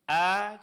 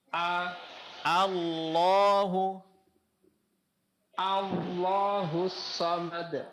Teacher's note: Alif hamzatul wasal pada lafaz Allah. A itu tipis.